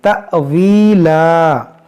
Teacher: یہاں پر یہ حمزہ ساکنہ ہے، اس کو جھٹکا دے کر پڑھیں گے